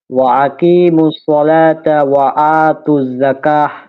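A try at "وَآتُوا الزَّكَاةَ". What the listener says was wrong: যাকাহ, কাতে টান আছে না 1 আলিফ, মধ্যে তবাই, জবরের পরে খালি আলিফ। যাকাহ।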